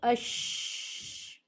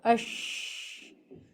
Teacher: زبان بیچ میں آواز منہ کے اندر پھیل رہی ہے تیزی کے ساتھ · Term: تفشی